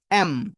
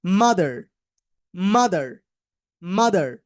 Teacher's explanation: lips দুইটা ঠোঁট দুইটা লাস্টে মিশে যাবে একটা আর একটার সাথে এন্ড নাক দিয়ে বের হবে বাকি সাউন্ডটা